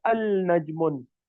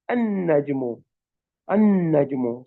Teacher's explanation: So Hamza connects with noon and skipping the lam.